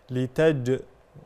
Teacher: قلقله الجيم وتكون شديده يعني فيها صفه الشده